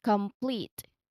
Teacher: Here the cluster appears right in the middle, of course, because it's medial cluster, and between first and second syllable. So notice how the PL sound essentially starts the second syllable · The first syllable is come, and then the second syllable is pleat, with a long E. Now, with a long E because there's a colon there. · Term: PL cluster